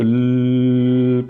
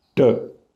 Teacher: ल को आप प्रोलॉन्ग कर सकते हैं, ड को आप प्रोलॉन्ग नहीं कर सकते, ज़्यादा देर तक नहीं बोल सकते। ड तो ड ही है, लेकिन ऐसे करके हम बोलते जा सकते हैं क्योंकि हमने आगे से रोक रखा है, साइडों से रिलीज़ करते जा रहे हैं। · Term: लेटरल रिलीज़